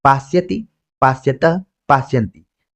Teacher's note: ज्यादातर रूपों को आप देखेंगे तो उसमें मूर्धन्य श, आधा श आता है, लेकिन यहाँ पर आप देख रहे हैं कि दंत स आ रहा है।